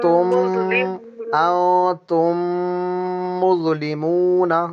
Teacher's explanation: होठ चिपके रहेंगे और चिपके चिपके कम से कम नाक से हम साउंड निकालेंगे एक दो सेकंड रोक कर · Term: गुना